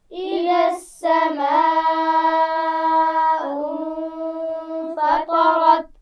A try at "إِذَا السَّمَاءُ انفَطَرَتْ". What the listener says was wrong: اذا السماء بڑی مد ہے، کھینچ کر پڑھیں گے. غنہ کیا جائے گا. فطرت، طا اور را دونوں موٹی پڑھی جائیں گی.